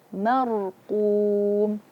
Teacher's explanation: Huruf sebelumnya adalah mim. Maka kita mengucapkan ro dengan tebal karena ro sukun sebelumnya fathah.